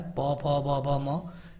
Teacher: ओष्ठ में पूरा प वर्ग आता है, प, फ, ब, भ, म, लेकिन इसके साथ छोटा ऊ और बड़ा ऊ भी ओष्ठ में ही आता है।